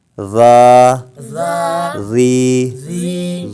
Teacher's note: اور جو زال ہے حروف لثویہ میں سے ہے، یعنی زبان کا سرا اور اوپر کے دانتوں کے اندرونی کنارے سے ادا ہوتا ہے۔